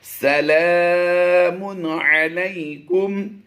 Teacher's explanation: دو پیش کی تنوین کے بعد عین حروف حلقی سے آ گیا، تو یہاں پر ہم نے اظہار کرتے ہوئے پڑھنا ہے